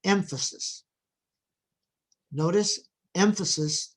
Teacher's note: emphasis the stress is on the first syllable